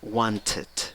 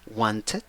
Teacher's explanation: el verbo acaba la pronunciación originalmente en una t entonces en el pasado va a necesitar una sílaba más